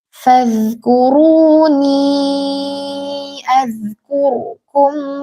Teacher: Nah, ro sukunnya dibaca tebal. Walaupun huruf kaf itu bukan huruf tebal, tapi karena ra ini di tengah-tengah huruf huruf yang berharakat dhammah, kafnya sebelumnya dommah dan setelahnya dommah, jadi dia otomatis baca tebal.